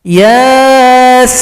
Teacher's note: Ya dua ketukan, sin 6 ketukan